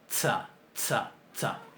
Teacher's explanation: si uno le pone una T adelante, se logra que el sonido S sea más duro, ¿verdad? Sea en alguna medida oclusivo. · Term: TS